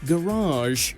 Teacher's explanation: It's often pronounced with a long A at the end in America, sounding more like garage.